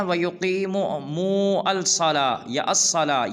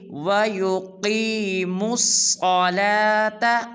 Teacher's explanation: بعض مسلمان پڑھ دیتے ہیں وَيُقِيمُوا الصَّلَاةَ یا الصَّلَاةَ، یہ بالکل غلط ہے، میم کو صاد مشدد کے ساتھ ملائیں گے اور پڑھیں گے وَيُقِيمُوا الصَّلَاةَ وَيُؤْتُوا الزَّكَاةَ۔